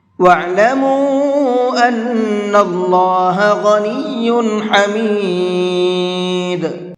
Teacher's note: وَاعْلَمُوا أَنَّ اللَّهَ غَنِيٌّ حَمِيدٌ، ان کے نون میں بھی غنہ کریں گے اور اللہ کے لام کو منہ بھر کے پڑھیں گے، اس لیے کہ اللہ کے لام سے پہلے زبر ہے